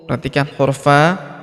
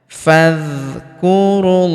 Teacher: Perhatikan huruf fa langsung masuk sambung ke huruf dza yang berharakat sukun. Alifnya tidak dibaca. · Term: hamzah wasal